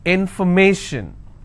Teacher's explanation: If I have more number of syllables, information, first I will break it, information. So where do I stress? I will stress on may.